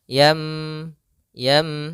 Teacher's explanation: apa yang dibalikkan Maksudnya apa atau merubah yang di sini adalah suara nunnya atau suara tanwinnya dirubah menjadi suara huruf mim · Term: iqlab